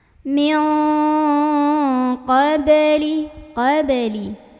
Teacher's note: nun sukun ini dibunyikan samar-samar mau bilang qaf sambil berdengung. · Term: ikhfa ab'ad